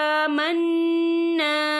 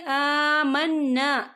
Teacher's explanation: यहाँ नून मुशद्दद है, तो यहाँ पर गुन्ना होगा और यहाँ पर अलिफ मद्दा भी हो रहा है, खाली अलिफ से पहले ज़बर है, तो हम इसे 2 या 3 हरकत के बराबर खींच के पढ़ेंगे।